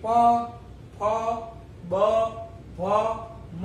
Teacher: ઓષ્ઠ્ય એટલે કે બંને હોઠ ભેગા થાય. બંને હોઠ ભેગા થયા વગર આ શબ્દો બોલી શકાય નહીં.